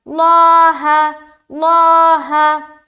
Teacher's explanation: لفظ اللہ کا جو لام ہے اسے موٹا رکھنا ہے